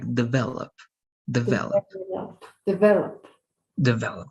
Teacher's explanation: only the stress is more like in the middle